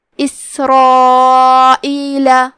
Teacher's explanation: کلمت اسرائیل میں سین ساکن ہے، لہذا ہمیں سین کو ہمزے سے پڑھنا ہے. حرف را پہ زبر ہے اور اس کے بعد مد الف ہے، تو ہم یہ دونوں حرف کو تفخیم سے ادا کریں گے. یہ مد واجب متصل ہے.